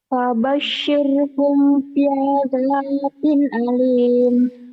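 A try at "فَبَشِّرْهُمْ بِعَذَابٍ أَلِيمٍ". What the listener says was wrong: kamu kurang neken bi'ada ya, kurang neken. Kurang neken. Fabashshirhum bi'adzabin alim.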